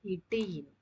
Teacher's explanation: இரு மெய்களும் நாவின் நுனி அன்னத்தின் நுனியை பொருந்துவதால் பிறக்கும் எழுத்து இட்டு இன். இரு மெய்யும் மேல்வாய் பல்லின் அடியை நாக்கின் நுனி பொருந்துவதால் பிறக்கும் எழுத்து இத்து இந்து.